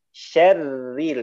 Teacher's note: di situ ada ro bertasydid dalam keadaan kasroh, tipiskan Pak